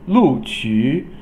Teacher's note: Lu is fourth tone, Qu is third tone